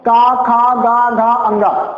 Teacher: जो हमारा क वर्ग होता है इसका उच्चारण कहां से होता है, कंठ से।